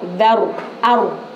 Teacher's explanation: karena rnya itu ro tafkhim ro yang harus dibaca tebal karena ada ro sukun sebelumnya harakat fathah